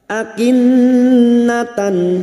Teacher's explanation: nun yang bertasdid gunna musyaddada kita dengungkan selama 3 harokat. Akinnatan, tak marbuto yang berharokat fathah tanwin bertemu hamzah idhar halki, nun sukun atau tanwin yang bertemu dengan 6 huruf ini, maka fathah tanwin atau fathatain dibaca jelas tanpa mendengung.